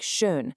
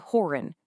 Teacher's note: Now, we don't really have an exact English equivalent for this one, but you can physically force the sound by saying E while keeping your lips rounded like U